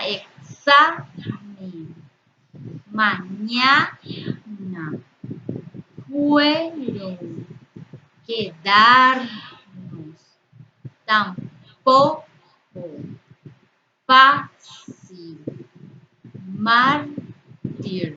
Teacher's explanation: todas estas palabras tienen sílaba tónica en su penúltima sílaba, por lo tanto son palabras llanas o graves.